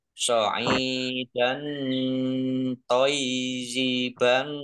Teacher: So'idan toiziban fa, ain kasroh ya sukun mat tobi'i, panjang 2 harokat. Fathah tanwin bertemu dengan huruf to, bacaan ikhfa, dibaca samar-samar. Ya-nya dibaca double, ada tasdidnya.